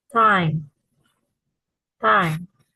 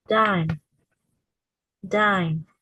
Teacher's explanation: The tongue tip touches the alveolar ridge, stops airflow briefly, then releases it. There's no vocal cord vibration.